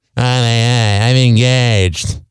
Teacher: And she has a vocal fry like a girl on TMZ.